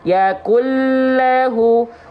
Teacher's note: Karena ada idgham bigunah, warnanya merah. Dibaca lebur tanpa gunah, tanpa ditahan, tanpa dengung. Yakullahu, ujung lidah menyentuh langit-langit paling depan tuh.